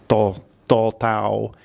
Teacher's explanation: this is the unaspirated T sound